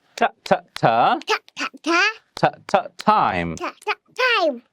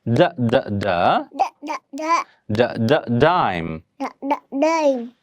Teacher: difference between this voiceless consonant sound that you hear at the beginning of the word time and it's voiced partner that you hear at the beginning of the word dime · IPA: /t/ vs /d/